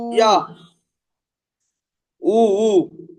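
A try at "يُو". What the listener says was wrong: উ বলছেন ঠিক আছে, কিন্তু টানটা তো দিতে হবে। ইয়া ওয়াও পেশ উ হবে না।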